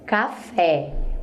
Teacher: café, o fé sai forte e é a última.